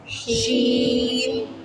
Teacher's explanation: जबान के दरमियान से और ऊपर तालू के दरमियान से अदा होता है। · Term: सीटी वाला